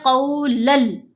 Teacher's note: جو نون کی آواز ہے اس کو ہم نے لام کے اندر مرج کرنا ہے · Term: ادغام